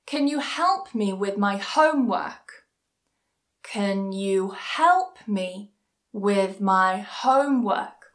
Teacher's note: So notice that help and homework are both stressed. Everything else is a lot weaker and a lot softer.